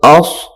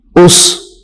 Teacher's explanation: اس میں بھی سیٹی کی آواز نکالنی ہے لیکن سین کی آواز سے کم ہو